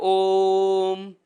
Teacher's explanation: ओ को आप इतना लंबा बोलिए कि जितना 3 ओ बोलने में समय लगता है उतनी देर तक आपको लगातार ओ का उच्चारण करना है। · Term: प्लूत